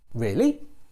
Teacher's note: you can use a rising tone to express doubt